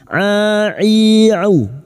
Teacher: Wa iya'udu, ya'udu huruf ain, jangan tertukar hamzah, huruf ain, a'i'u wastul halqi atau tengah tenggorokan